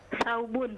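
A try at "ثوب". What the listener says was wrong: Saubun. Afwan, ana sami'tu sabun bis-sad.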